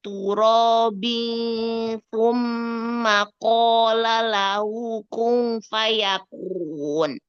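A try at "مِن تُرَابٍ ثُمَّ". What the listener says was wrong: Nah, ifanya masih ada nunnya walaupun dia samar ya. Min turabin thumma.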